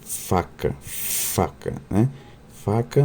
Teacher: pode ser criado pelo contato dos dentes superiores com o lábio inferior e nesse caso as consoantes são chamadas de lábio dental